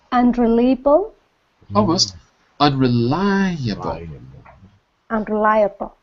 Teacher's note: two 3 four five five syllables one dot per syllable and the stress is on the third syllable because the Big Dot is above the third syllable